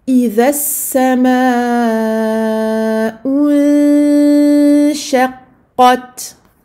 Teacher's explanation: je vais avancer les lèvres ici pour la dhamma et arrondir mes lèvres, et je vais revenir avec les lèvres à la normale pour le soukoun du noun nasalisé.